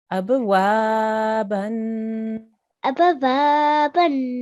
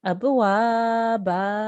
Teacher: when you are doing a waqf, the tanween changes into a single fatha. Okay, a single fatha, and you will elongate because of the alif at the end becomes an alif mad. So you would say abwaba.